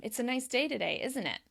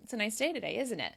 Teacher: It's still a question, but my voice is falling because I'm not really inviting the person to disagree with me in any sort of way. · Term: tag questions go down